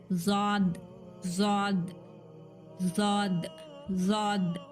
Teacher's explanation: जबान का जो किनारा है ना, लेफ्ट और राइट, मिडिल नहीं, लेफ्ट और राइट दोनों तरफ से जाके दाढ़ों को टच होना जबान